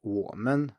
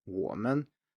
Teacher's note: the third tone is somewhat of an exception here as is usually the case with the third tone because here the neutral tone is usually higher · So if we say something like 我们, as in us or we, 我们, the men here is higher than 我. 我 is very low and men is high.